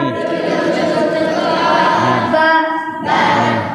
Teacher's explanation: দুই ঠোঁটে ভিজা অংশ হইতে উচ্চারিত হয়